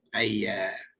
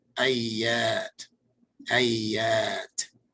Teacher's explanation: when it becomes plural is when you add the elongation and the T ending